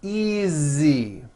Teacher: again the S is like a voiced z